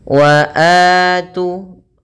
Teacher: Wa atu panjangnya 2 harakat. Ini kita namakan dengan mad badal.